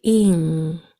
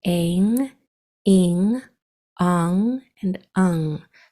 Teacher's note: It's kind of like an N, but your tongue, the back of your tongue is to the back of your throat, not the tip of your tongue to the top of your mouth. The back of your tongue goes to the back of your throat. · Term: nasal sound